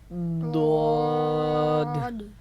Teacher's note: حرف ضاد کو پر کر کے پڑھنا ضرور ہے، مگر پر کرنے کا مطلب یہ نہیں کہ آپ ہونٹوں کو گول کر لیں، یعنی کہ پیش بنا دیں۔ ضاد نہیں پڑھیں گے۔